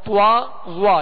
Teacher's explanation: صاد ضاد طا طا جیسے طا کو ادا کرتے ہوئے یا وا کو ادا کرتے ہوئے اس کو موٹا کرتے ہوئے ہونٹوں کو جب گول کرتے ہیں تو طوا اور غوا یعنی اس میں ایک حرف کا اضافہ ہو جاتا ہے واو کا